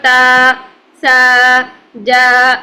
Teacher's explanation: یہ دونوں کی آواز سیم ہوتی ہے، کھڑا زبر کی اور الف مدہ کی، 2 حرکت ہی کھینچ کے لمبا کر کے پڑھنا ہوتا ہے